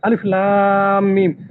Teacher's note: দেখুন লাম টান দিচ্ছি, মাদ করতেছি